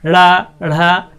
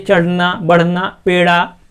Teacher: ड़ा अढ़ा, कहिए चढ़ना बढ़ना, पेड़ा, कहिए पेड़, ऐसे शब्दों का उच्चारण करेंगे तो हमारा जब ड़ा ध्वनि आएगी, इसमें जो हमारी जिह्वा है, जीभ है, वो मुंह के ऊपरी हिस्से को उल्टा होके टच करेगी और झटके से बाहर निकलेगी, इसलिए इसको उक्षिप्त कहा जाता है। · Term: उक्षिप्त व्यंजन